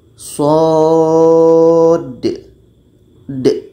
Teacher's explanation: Karena ada dal mati di ujungnya. Maka dibaca dengan qalqalah.